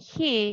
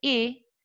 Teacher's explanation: The second exception says that the glottal is elided in unaccented syllables and the pronouns · And the final, yeah, in the glottal stop could be omitted, as in, instead of saying he, you can say e, only if this pronoun has no stress, yeah, is unaccented completely.